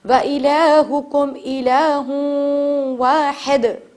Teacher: ہم غنہ کے ساتھ تھوڑی 2 سیکنڈ تک ناک میں سانس رکھیں گے اور اسے غنہ کریں گے، نون کی آواز کو چھپا دیں گے. وَإِلَٰهُكُمْ إِلَٰهٌ وَاحِدٌ، قلقلہ واحد.